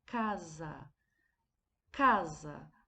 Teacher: a sílaba cá foi pronunciada mais fortemente que a sílaba usar portanto a sílaba cá é a sílaba tônica dessa palavra